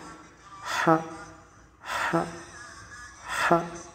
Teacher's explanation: L'épiglotte recule légèrement tout en laissant passer l'air libre.